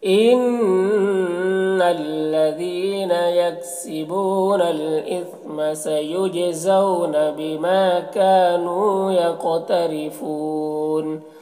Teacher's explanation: زو میں واو لین سے نرم آواز کے ساتھ جلد پڑھیں گے